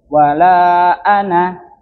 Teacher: Ada lingkaran kecil itu tandanya dia tidak dibaca alifnya, tidak dibaca panjang, cukup pendek.